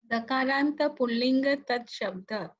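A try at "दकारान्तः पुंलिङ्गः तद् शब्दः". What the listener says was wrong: Dakaranta, no, you have to pronounce the visargas also at the end. Dakarantaha Punlingaha Tad Shabdaha.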